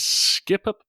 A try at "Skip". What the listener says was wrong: Okay, none of you were paying attention when I pronounced it, because I didn't say skip up. I just said skip.